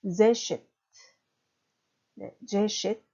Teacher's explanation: 뒤에서 두 번째, 그러니까 결국 맨 앞에 제에 강세가 있는 거죠